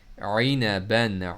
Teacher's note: عین کو middle throat سے پڑھنا ہے اپنے